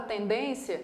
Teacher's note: Na palavra tendência, eu tenho 1, 2, 3 sílabas. A mais forte é a penúltima. Então, ela é uma palavra paroxítona, que termina em ditongo.